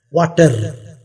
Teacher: Ra is dropped. The sound ra, fricative is dropped.